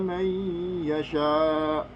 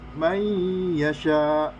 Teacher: idgham bigunah, yaitu bacaan yang dibaca dengan dengung